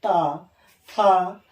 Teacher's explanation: त थ द ध न तवर्ग, ये किस चीज से? दांत से। दांत से बोला जाता है।